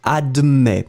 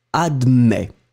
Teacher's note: You will write it A-D-M-E-T S. Final S is not pronounced, so you will in fact pronounce admet.